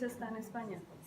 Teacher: todo está unido y lo dije muy despacio